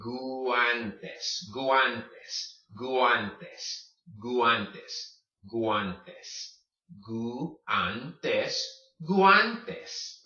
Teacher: You don't combine these. You would say the U, then say the A.